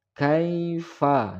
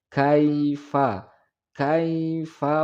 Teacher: Alam taro, alam taro, kaifa. Nah, di sini terdapat ya sukun jatuh setelah tanda baris atas atau fathah. Maka ini disebut huruf lin. Cara membacanya yaitu cukup dilunakkan atau dilemaskan.